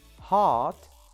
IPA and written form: hɑːt (heart)